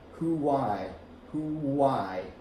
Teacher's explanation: The same thing happens, but instead of a Y sound, you get a W sound. Who-why, who-why. You make a little kissy face.